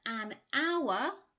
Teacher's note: But then we do say something like an hour, because although it's written with an H, the H is silent. Hour begins with a vowel sound, hence an hour.